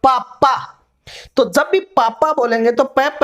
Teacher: जैसे बोलेंगे अपन पापा, तो जब भी पापा बोलेंगे तो प प यानी जो दोनों होठ है एक दूसरे से मिलेंगे तो ही अपना प उच्चारित होगा। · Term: औष्ठो